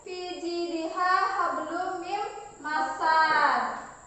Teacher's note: qalqalah tingkatan ringan ini adalah qalqalah yang disukunkan dalam keadaan wasal